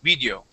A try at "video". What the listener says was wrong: The word is video with the short I, just like if you were to say it or is, did, his, this, okay, all those short I sounds. The word is video.